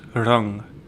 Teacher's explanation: nga, which is a velar nasal sound. It's a similar sound to the ng in sing.